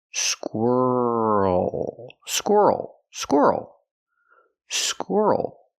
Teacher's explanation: Squirrel. When you leap to the dark L, the mouth opens a little bit and you have an extra sound.